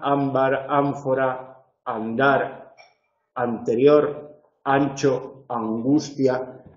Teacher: veréis que el punto de articulación va evolucionando hacia atrás